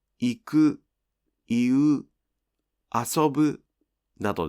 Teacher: These verbs don’t have a pitch drop at the end of the word. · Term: verbs that don’t drop